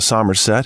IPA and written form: ˈsʌmərˌsɛt (Somerset)